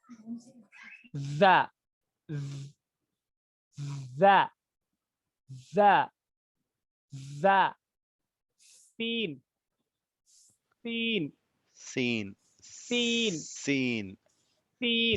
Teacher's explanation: ऊपर का जबड़ा, ऊपर के दांत, नीचे के दांत दोनों मिल रहे हैं, दोनों को मिला रहे हैं आप।